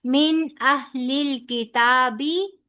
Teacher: نون ساکن کے بعد آگے حمزہ آ رہا ہے، لہذا نون ساکن کا نون کا پورا اظہار ہوگا